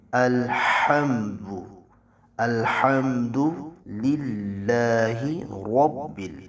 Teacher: ہا کو وسط حلق سے آپ نے نکالنا ہے